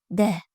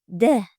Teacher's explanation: d undosh tovush hosil boʻlish oʻrniga koʻra til oldi undoshi hosil boʻlish usuliga koʻra portlovchi, ovoz va shoquinning ishtirokiga koʻra jarangli undosh.